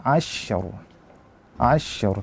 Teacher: kita baca tebal Kenapa karena ro kita anggap sukun karena diwakafkan